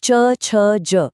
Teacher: आवाज सीधे गले से, कंठ से आती है ना? अब बोलिए च, छ, ज। जीभ तालू से लग रही है।